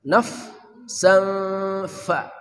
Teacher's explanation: Hamasnya kurang ya pada kata naf, anginnya keluarin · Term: hams